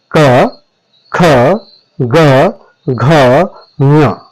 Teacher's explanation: यदि आप उच्चारण मेरे साथ करेंगे तो आप पाएंगे कि कंठ के पास जो है जो पाइप है वो पहले चिपकती है फिर खुलती है। तब आपकी कंठ ध्वनियों का उच्चारण होता है।